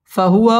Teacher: ওয়াও ঠোঁট গোল করে উচ্চারণ করতে হবে। ওয়া জবরে বাম পাশে খালি আলিফ মদের হরফ এক আলিফ টেনে পড়তে হবে।